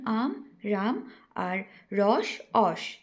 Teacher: বরেন্দ্রী উপভাষার ধ্বনিতাত্ত্বিক বৈশিষ্ট্য হল শব্দের শুরুতে র স্থানে অ উচ্চারিত হয় এবং শব্দের আদিতে যদি অ থাকে সেই অয়ের স্থানে র উচ্চারিত হয়।